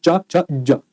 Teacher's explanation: जा को बोलने से पहले हल्का सा जो वाइब्रेशन फील है ना, इसे कहते हैं स्वर तंत्रियों में कंपन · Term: सघोष वर्ण